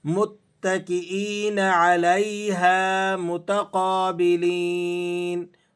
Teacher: قاف پہ کھڑا زبر ہے اور لام یا زیر لی یا مدہ ہے، آپ نے اسے کھینچ کر پڑھنا ہے۔